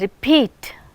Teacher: Again this is we have two syllables, re and peat. So, in the second syllable it is receiving aspiration because stress is used here.